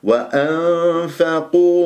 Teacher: اعطيني احساس النون مع الفاء هذا هو الصوت الذي اسمعه بالغنه · والقاف مفخمه مرتبه ثالثه مضمومه